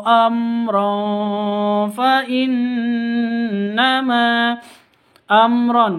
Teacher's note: mim sukun bertemu dengan ro jelas bacanya karena izhar syafawi